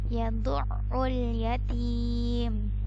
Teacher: Ini huruf ain letaknya di tengah tenggorokan.